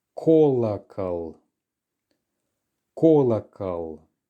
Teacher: All of them contain the letter O, but it's the first one that we're stressing. Therefore, both of the other ones have to be reduced. So it's kolokol.